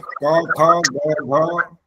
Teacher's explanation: ये जो क वर्ग कहलाता इसका स्थान है कंठ